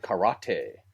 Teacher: they put the the the inflection on that second syllable